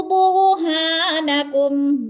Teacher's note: بر کی را کو پر پڑھا جائے گا کیونکہ را ساکن سے پہلے با کے اوپر پیش ہے تو را پر پڑھی جائے گی، اور اگر را ساکن سے پہلے را کے نیچے پہلے لفظ کے نیچے زیر ہوتی پھر را باریک پڑھا جاتا، اب را پر پڑھا جائے گا۔